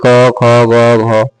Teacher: ये पूरा क वर्ग जितने होते हैं ना सब कंठ से होता है